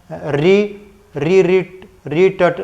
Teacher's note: मुड़ के जीभ बीच में मुड़ जाती है